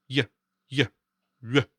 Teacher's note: Make a y sound while rounding your lips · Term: W with umlaut